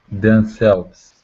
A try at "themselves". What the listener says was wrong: Themselves. So what do we do for the TH sound? We bring our teeth together. We have to block the air with our tongue. Themselves. Themselves. Okay, so dem, there's no blockage of air.